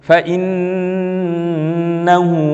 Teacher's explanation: Maka cara bacanya harus dengan mendengung, yaitu dengan gunnah. Keluar pasti dari hidung dan tidak melibatkan mulut. Coba kita kalau baca, fa innahu, nggak ada lisannya.